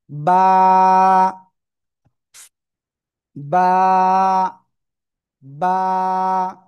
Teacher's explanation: এই বা অক্ষরটা আমরা উচ্চারণ করব এই দুই ঠোটের ভিজা অংশ থেকে